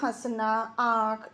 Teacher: अनुनासिक, तो इसे मुंह और नाक दोनों से बोला जाता है